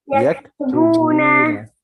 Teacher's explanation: Just make sure you stretch the wow a little more.